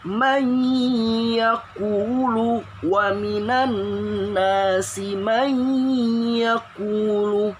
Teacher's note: Bacanya bukan man yaqulu, tapi nun sukunnya masukin ke huruf ya-nya. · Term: idgham